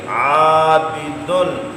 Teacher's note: عین باریک ہے اس لیے الف بھی باریک پڑھیں گے